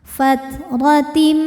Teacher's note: ala fatim ro dihukumi dengan tafkhim ro tafkhim karena barisnya fathah maka ro dibunyikan dengan tebal